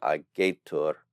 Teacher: But I want you to notice that the T is not final here on agatur. And since it's not final, the E gets to retain its long quality